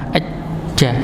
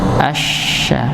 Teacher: Kalau huruf jim itu ada tekanan, aja, dirasakan nggih. Jadi tengah lidah itu diangkat ke atas langit-langit, aja. Kalau shin jangan nempel, asya.